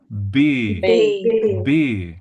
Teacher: it's like an explosion, and you see that the sheet moves